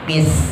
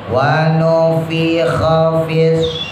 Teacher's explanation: Fa ya, bibir bawah digigit gigi atas. Wa nufikha fis.